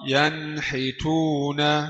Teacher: نون ساكنة مظهرة قبل الحاء المكسورة